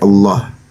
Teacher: secara tajwid itu pembacaannya itu dengan ee tafkhim dibaca tebal